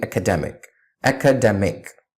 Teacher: we have less stress on the second syllable in academic